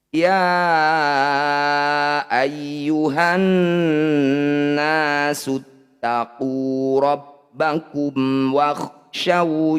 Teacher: Ini disebut bacaan izhar syafawi. Bunyi mim sukunnya baca dengan jelas. Pastikan rapat bibir kita di sini. Rabbakum wa, selesaikan bunyi mim dulu, baru pindah ke waw.